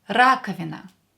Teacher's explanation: Here O will be pronounced as A because it's not stressed.